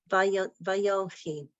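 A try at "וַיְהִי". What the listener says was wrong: Not yo, Vaye. Vayehi.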